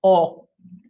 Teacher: in spanish it's just o don't move your lips at all